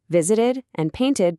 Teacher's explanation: visited and painted both get that extra ID syllable.